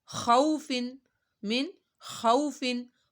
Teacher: واو ساکن سے پہلے زبر آ رہی ہے تو یہاں پر واو لین ہو رہا ہے یہاں پہ ہم نے اس کو لمبا نہیں کرنا یہاں پہ گناہ بھی نہیں کرنا بس سیدھا سا پڑھنا ہے